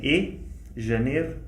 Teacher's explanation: Then, still on diphthongs, the EI diphthong. In the South they say “ê”, “Janêro”